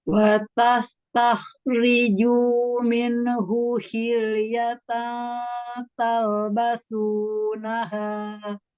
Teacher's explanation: Sinnya ini belum tipis banget. Masih S Indonesia. S Indonesia itu ngawang ya antara sin dengan shad. Jadi tengah-tengah.